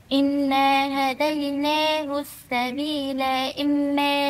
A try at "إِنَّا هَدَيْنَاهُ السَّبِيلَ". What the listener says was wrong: مش سبيلة، سبيلة سبيلة، أنا زودت ألف، ما فيش ألف، دي لام مفتوحة. إنا هديناه السبيل إما سبيل إما سبيل سبيل، مش سبيلة سبيل، دي لام فتحة مش لام ألف. مش كاف، أنت عمالة تزودي ألفات النهاردة.